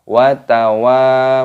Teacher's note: Watawa, wawunya dibaca panjang, ada tanda alifnya. Mad tabi'i dipanjangkan 2 ketukan.